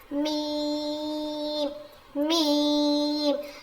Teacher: دونوں ہونٹوں کے سوکھے حصے سے ادا ہوتا ہے. میم، گیلے حصے سے با ادا ہوا تھا، میم سوکھے حصے سے ادا ہوگا.